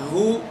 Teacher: the lips are normal the tongue is flat ha ha hoo the back part is raised the lips are protruded and very well rounded